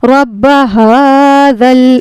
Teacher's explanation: ذال کو نرمی کے ساتھ ادا کرنا ہے، ذال کا مخرج ہے زبان کی نوک اور ثنائے علیہ یعنی سامنے والے دانتوں کا کنارہ اوپر والے جو دانت ہوتے ہیں